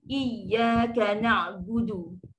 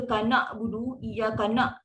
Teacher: Okey, sekarang ni bila huruf hamzah jangan tertukar dengan huruf ain, jangan tertukar dengan hamzah. Untuk sebut ain sempitkan tekak